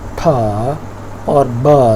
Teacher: दोनों साउंड्स में complete closure है और ये होंठों के ज़रिए होता है। एक वॉइस्ड है, एक वॉइसलेस है।